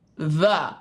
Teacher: there is air literally coming right between my teeth and my tongue